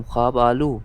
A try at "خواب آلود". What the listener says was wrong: خواب آلو نہیں ہے، خواب آلود. ہاں خواب آلود بولا ہے، دال ہلکا سا آیا ہے نا، نہ ویسا پڑھتے ہیں.